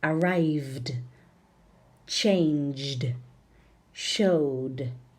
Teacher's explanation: After voiced endings, ED is pronounced d, d, d.